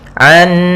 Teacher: cara membacanya kita tahan dulu suara n-nya, an 2 harakat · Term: gunnah